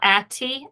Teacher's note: you do have that Accent on the second syllable